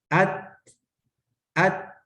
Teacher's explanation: آخر میں نا ہلکا سا ساؤنڈ آتا ہے، اس میں ہلکی سی سانس جو ہے وہ جاری رہتی ہے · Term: ہمس